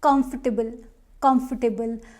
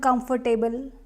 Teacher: first syllable is stressed here